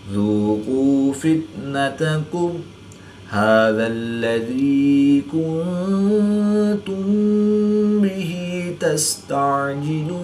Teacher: نون ساکن کے بعد تا حرف اخفا میں سے ہے تو یہاں پر اخفا ہوگا، یعنی غنہ زمانی کر کے پڑھیں گے۔ میم ساکن کے بعد حرف با ہے تو یہاں پر اخفا شفوی ہوگا، یعنی غنہ زمانی کر کے پڑھیں گے۔